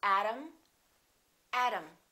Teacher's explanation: T between two vowels sounds exactly like the D.